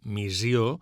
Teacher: Observem la paraula missió dita amb una S sonora, missió, tot i que a la grafia de doble S li correspon el so S sorda.